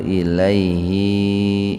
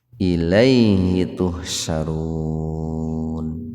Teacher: Jadi hi-nya jangan dibaca panjang, itu bukan mad silah qasirah. Karena sebelum hi, sebelum huruf ha itu ada ya sukun.